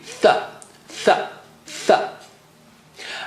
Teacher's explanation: If this is your top teeth, okay, the upper teeth, this is your upper teeth, and the tongue tip is just a millimeter out, just touch the upper teeth and blow air. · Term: letter Tha